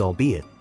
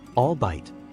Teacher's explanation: the pronunciation emphasizes all three syllables distinctly